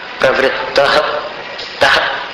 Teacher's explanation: विसर्ग की ध्वनि ह जैसी होती है कुछ, लेकिन ऐसा लगना चाहिए जैसे दीवार से टकरा कर।